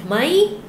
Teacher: Mai at the end of the sentence with rising tone. Mai. It's a yes no question, and I put the word ka to make it more polite.